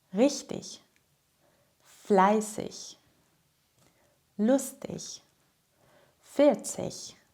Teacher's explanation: In der Standardsprache spricht man ‚-ig‘ wie ‚ich‘.